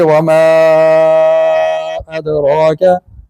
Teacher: अलिफ मद्दा के बाद हमजा आ गया, या छोटी मद के बाद हमजा आ रहा है, तो यहाँ वो बड़ी मद हो जाएगी।